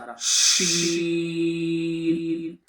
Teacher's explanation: زبان کے بیچ کو بالکل اوپر کے تالو میں لگائیں